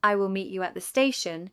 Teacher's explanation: the stressed words are meet, station. I will, you at, the are unstressed. The sentence sounds like I will meet you at the estation. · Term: sentence stress